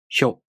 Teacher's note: To pronounce Hyo, the tongue moves from the [ç] consonant to the [o] vowel.